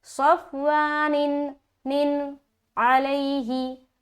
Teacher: नून की आवाज सिर्फ जाहिर करेंगे। यहाँ पर देर नहीं करना, नाक से आवाज नहीं निकालनी, ये सब सूरत हाल में आप गलत पढ़ रहे हैं। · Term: इजहार